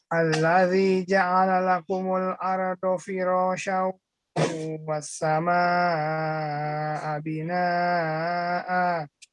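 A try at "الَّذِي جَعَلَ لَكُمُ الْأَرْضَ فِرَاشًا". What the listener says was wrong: Dotnya kurang bak ya. Wal ardo bo kurang nempel mayoritas lidahnya ke langit-langit, kurang diangkat ke langit-langit lidahnya. Bo. Do itu ujungnya saja. Ini tengah lidah, pangkal lidah, pinggir-pinggir tengahnya itu ya, itu nempel semuanya. Ya alladzi ja'ala lakumul arda.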